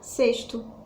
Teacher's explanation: Sexto, eu não consigo falar o X, eu falo esse X com o som de S. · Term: som do S